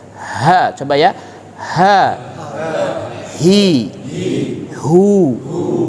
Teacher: huruf H itu ee keluar dari dasar tenggorokan yang paling bawah ya kemudian terbukanya suara dengan luas diiringi oleh aliran angin dan itu lebih kepada lebih dekat dengan Dada ya ha ha